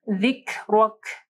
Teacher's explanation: اور یہاں پہ دیکھیں پھر کاف کے اوپر جو ہے جزم ہے، تو کاف ساکن ہے، یہاں پہ حمز ہوگا